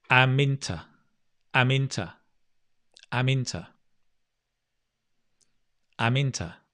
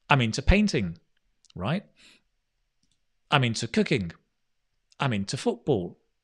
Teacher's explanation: But what I've done is I've changed it from I am into, 3 words, into a sound, a chunk.